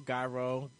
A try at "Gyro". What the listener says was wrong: Gyro. You gotta roll your R. Roll your R's.